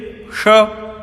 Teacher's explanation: मूर्धा हमारे यहाँ पर तालु से नीचे स्थान होता है, उसको मूर्धा कहते हैं उच्चारण स्थान में, इसलिए इसको मूर्धन्य श कहते हैं